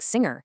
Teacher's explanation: that tricky velar nasal sound in a word like singer